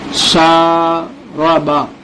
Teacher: रा की आवाज मोटी होगी, पुर होगी